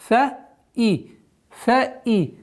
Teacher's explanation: Четкое произношение огласовки кесра, то есть звука хамзы.